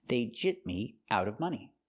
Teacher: when I link it with a consonant after gypped, it's a stop T and you don't really hear it